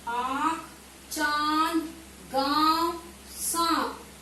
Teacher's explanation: इस शब्दों को बोलने के लिए नाक और मुंह दोनों से ध्वनि का उच्चारण हो रहा है। आंख, चांद, गांव, सांप, यानी कि इन शब्दों में जहाँ चंद्र बिंदु लगा है, यहाँ पर मुंह के साथ साथ नासिका द्वार से भी आवाज निकल रही है। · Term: अनुनासिक स्वर